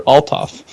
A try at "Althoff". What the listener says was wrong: You kind of said it correctly. You just pronounced the beginning really awkwardly. Like it's Oltoff. You basically had it, so.